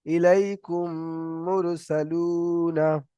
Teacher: মিম সাকিনের পরে যদি মিম আসে, একটা অক্ষর মিম, তাহলে মিমকে মিমের সাথে মিলিয়ে একালিফ গুণনা করে পড়তে হবে। একে ঈদগামে স্বাভাবিক বলে। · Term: ঈদগামে সাফাবি